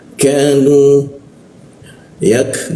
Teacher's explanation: Nah, huruf ya bertemu ka K ka dimatikan diikut tengok lidahnya diturunkan sehingga ada hembusan udaranya. Jadi ka mati itu ada hembusan udaranya.